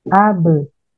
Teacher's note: Qalqalah ini terjadi karena dipengaruhi oleh sifat sidah huruf yang menahan keluarnya suara dan sifat jahar yang menahan keluarnya nafas. Qalqalah pada huruf ba bersukun diucapkan dengan melepaskan dua bibir tanpa merenggangkan rahang.